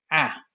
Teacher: at the front we have a very open uh vowel a this vowel is so open in fact that you have to move your jaw downwards in order to pronounce it so not only do you just move your tongue down but